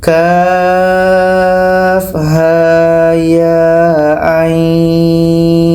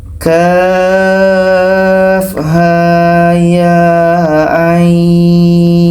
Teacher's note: dekat Ain ini kita panjangkan enam harakat setelah itu dengung dua harakat karena nun mati bertemu Shifa Akiki